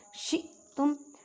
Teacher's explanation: حمزہ ساکن ہے، اس وجہ سے اسے جھٹکا دے کے پڑھیں گے